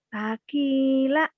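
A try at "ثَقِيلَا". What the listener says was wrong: salah. Iya, tapi panjang pendeknya kamu salah. Sakila. Kan layang panjang.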